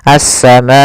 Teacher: Maka apabila ada hamzah datang setelah huruf mad dan hamzah tersebut berada dalam satu kata, maka dinamakan dengan mad wajib muttasil. Panjangnya adalah 4 harokat, maka kita panjangkan ma-nya 4 harokat.